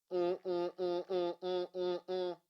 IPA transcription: ŋ